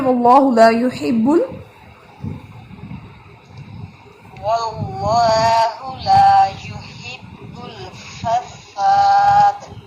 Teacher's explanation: فساد ساد سیٹی جو ہے وہ نمایاں ہونی چاہیے